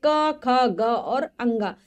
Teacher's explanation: क वर्ग, जो कंठ से बोले जाते हैं, क ख ग और अंगा, कंठी है इसलिए इनका नाम।